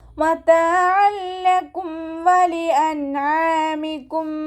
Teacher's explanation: തെൻവീനിന് ലാമിലേക്ക് ലയിപ്പിച്ച് ഉന്ന ഇല്ലാതെ ഉച്ചരിക്കുക കേട്ടോ, ഉന്ന കൊടുക്കാതെ ഉച്ചരിക്കുക. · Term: ഇദ്ആം ബിലാ ഉന്ന